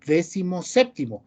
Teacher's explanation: Lleva la fuerza siempre en la E, en las dos E